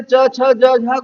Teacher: तो स्पर्श संघर्षी व्यंजन यही कहा थे च, छ, ज, झ को